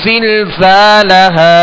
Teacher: زا ہے، اس کو سختی سے سیٹی کی آواز میں پڑھیں گے